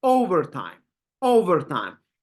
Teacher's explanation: you can feel how we're stressing the first syllable how we are pronouncing it uh more profoundly or more harder